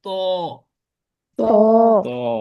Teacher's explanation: মোটা করে উচ্চারণ সাউন্ড আসে ত অর্থাৎ আপনার ঠোঁট দুইটা এভাবে গোল হয়ে যাবে। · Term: মোটা হরফ